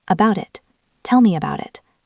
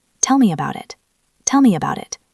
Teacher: About ends in t. It starts with a vowel. That is a flap t.